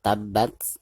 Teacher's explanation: ketika membaca tasukun itu harus ada napas yang mengalir keluar. Karena huruf ta tersebut merupakan salah satu daripada huruf al-hamz ya.